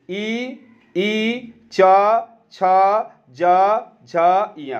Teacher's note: तालु से च छ ज इया निकलवे करता है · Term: तालव्य